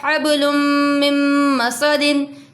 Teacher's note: तनवीन के बाद मीम आ रहा है तो इदगाम हो रहा है